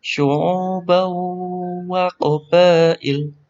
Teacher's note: Ada tanwin bertemu waw. Di sini bacaan idgham bi gunnah.